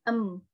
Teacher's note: bunyinya itu terdengar seperti mendengung